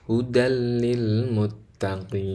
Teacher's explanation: tanwin pada lafal hudan itu diidghamkan, dimasukkan kepada lam. Jadi seolah-olah gak ada tanwinnya, tapi lamnya bertasdid ya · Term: idgham bila gunnah